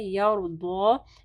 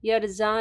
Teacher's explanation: یرزا نہیں پڑھنا، ضاد کو ہیوی پڑھنا ہے اور کھڑی زبر کو پڑھنا ہے